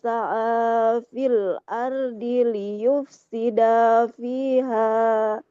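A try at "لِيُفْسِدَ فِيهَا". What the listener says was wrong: Nah, liyufsida dalnya nggak boleh panjang Ibu. Liyufsida fiha wa yuhlikal harsa wan nasl. Panjang pendeknya, hati-hati ya. Sedikit yang kelirunya memang, tapi nah yang sedikit itu pastikan dia jangan sampai tertukar bacaan panjang dan pendeknya.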